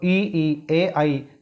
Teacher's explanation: ई ए आई जीभ के अगले भाग से बोले जाते हैं, इसलिए इनको अग्र स्वर कहते हैं।